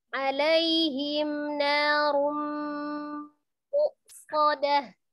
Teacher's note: Berarti tanwin bertemu dengan huruf mim ya. Itu hukumnya adalah idgham bi gunnah. Idgham tapi bi gunnah dengan gunnah.